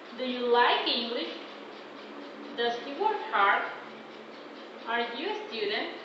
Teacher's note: Rising intonation. It is usually found in yes no questions.